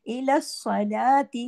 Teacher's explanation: स्वाद मोटा और दो मर्तबा क्योंकि इस पे तशदीद है। इला सलाती, लाम पे खड़ी जबर है, एक हरकत खड़ी जबर अलिफ के बराबर खिंचती है।